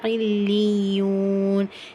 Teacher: First ஈன், second யூன். இதில் லாமுக்கும் அழுத்தம் கொடுக்கணும், யாக்கும் அழுத்தம் கொடுக்கணும்.